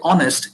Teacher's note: general case honest is an exception so when you say honest you're not pronouncing the h the h is kept silent you're actually skipping h and you're starting with uh you're starting from o and you